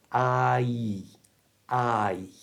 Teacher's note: We'll start with the I, which is two sounds. It's a A and a Y sound. That Y sound at the end is made by bringing your back teeth together.